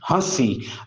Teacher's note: نون کی آواز ظاہر نہیں ہوگی، نون غنہ کی آواز کے ساتھ